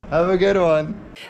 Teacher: the a is unstressed and followed by a consonant so it's reduced to be pronounced with a quick schah or uh sound have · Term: quick schwa